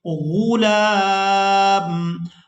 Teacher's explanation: اب یہاں پر بھی ہم علامات وقف دیکھ رہے ہیں، تو وقف کریں گے۔ وقف کی صورت میں ہم میم کو ساکن کر دیں گے، لام کو کھینچتے ہوئے کھڑی زبر کی وجہ سے میم ساکن کے ساتھ ملائیں گے۔